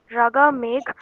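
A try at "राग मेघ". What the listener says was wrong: Okay, the last A is silent.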